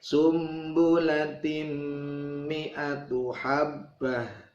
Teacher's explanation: tanwin ketemu mim, dibaca idgham